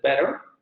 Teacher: la vocal media central aparece en sílabas inacentuadas, como en el ejemplo de better, La primera vocal va a ser la semiabierta, pero en la vocal, en la sílaba inacentuada vamos a tener la vocal media central.